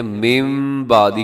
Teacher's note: اور اسی طرح کے دیکھیے گا لفظ لکھا ہوا ہے من بعدی، لیکن ہم پڑھتے ہیں من بعدی، کیونکہ نون ساکن کے بعد بعدی کی شروع میں با آ رہا ہے، تو نون ساکن کی جگہ پہ ہم میم پڑھ دیتے ہیں۔ تو اس بدلنے کو اقلاب کہا جاتا ہے۔